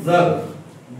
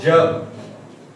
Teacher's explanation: जिभेचा शेंडा दाताला लावा उच्चार होतो जग जिभेचा शेंडा टाळूला लावा उच्चार होतो जग